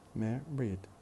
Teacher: the stress will be on the first syllable